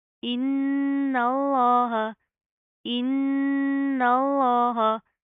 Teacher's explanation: نون کے اوپر شد آ رہی ہے، پہلے غنہ کریں گے، پھر لفظ اللہ کو موٹا پڑھیں گے